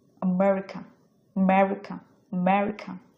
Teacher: এটা স্ট্রেসটা পড়েছে ম এর উপর আমেরিকা মতে গিয়ে স্ট্রেস পড়েছে আ খুবই শর্ট উচ্চারিত হয়েছে আমেরিকা